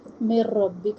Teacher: نون ساکن کے بعد را ادغام بلا غنہ کر رہے ہیں